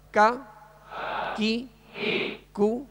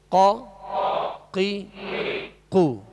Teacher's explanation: کاف کو جو ڈنڈی والا کاف ہوتا ہے اس کو باریک پڑھیں گے، اور قاف جو دو نقطے والا اس کو پر پڑھیں گے، موٹا پڑھیں گے